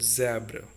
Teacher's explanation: you should not stress the e a lot you have to make a short e